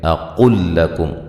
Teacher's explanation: گے، قاف کو ڈائریکٹ لام سے ملا دیں گے، یعنی کہ یہ لام کا لام میں ادغام ہو رہا ہے اور ایک حرف بن جائے گا ، دونوں حرف جو ہیں وہ مشدد ہو کے ایک حرف